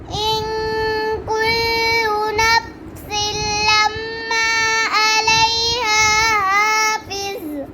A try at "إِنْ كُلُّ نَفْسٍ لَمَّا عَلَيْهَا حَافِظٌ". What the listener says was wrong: अपने लम्मा पर गुनाह नहीं किया दोबारा पढ़े इन मैं दोबारा पढ़ इन कुल्लु नफ्सिन लम्मा अलैहा हाफिज़